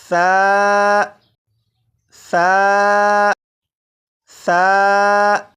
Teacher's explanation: इस तरह पढ़ूंगा कि इसे नरमी से पढ़ूंगा, यानी सीटी की आवाज़ के बगैर पढ़ूंगा · इन तीनों हरूफ को जब पढ़ेंगे तो सीटी की आवाज़ के बगैर पढ़ेंगे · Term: नरमी से पढ़ना